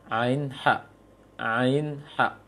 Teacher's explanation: Maka pengucapan ain bukan dari hidung, akan tetapi dari tenggorokan tengah, wasatal halak, tengah tenggorokan.